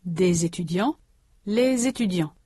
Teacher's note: This z is pronounced together with the following vowel, des étudiants, les étudiants. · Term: liaison